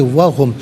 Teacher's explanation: وا علیحدہ ہے، ہم علیحدہ ہے، ملا کر پڑھیں گے، وہم، واو چونکہ مشدد ہے جماؤ کے ساتھ پڑھیں گے